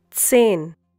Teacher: Hope you remember the pronunciation of Z in German. It's TS.